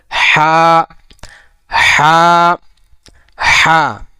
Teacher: এই হা টার উচ্চারণ হলো হলকের মধ্যকান হইতে অর্থাৎ হলকের যে কন্ঠলি যে আছে ওইখান থেকে একটু চেপে ধরে হাটা উচ্চারণ করতে হবে।